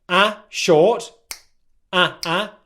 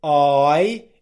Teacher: So /æ/ short, /æ/. /aɪ/ it lasts for longer.